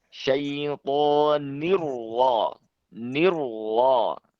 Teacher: itu roknya dibaca tebal ya